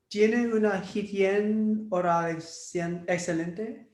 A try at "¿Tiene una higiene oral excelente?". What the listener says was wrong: Almost there, but you got it. That will be higiene. Remember, H doesn't sound in Spanish. Higiene.